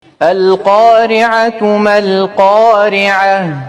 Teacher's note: وعندنا في القارعة عندنا في الأول عندنا القاف مفخمة والراء عندنا مرققة حيت جات مكسورة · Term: الراء مرققة